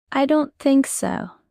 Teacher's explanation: Stress on don't and think